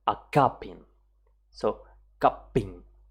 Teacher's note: You see how at one moment my voice kind of stop. It stops producing sound. That is a glottal stop.